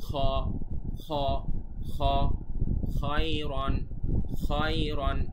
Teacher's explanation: বাংলা খয়ের থেকে একটু আলাদা, বাংলায় আমরা বলি খ একটু সামনের থেকে, এটা বলতে হবে আর একটু পেছন থেকে। খ খ একটু চাপ দিই।